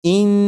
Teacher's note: आप गौर करिएगा कि जब आप पढ़ेंगे इन तो ज़बान तालू से लग रही है